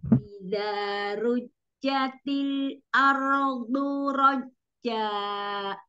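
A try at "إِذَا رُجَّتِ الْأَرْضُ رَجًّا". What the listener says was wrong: Yang kepanjangan rajja.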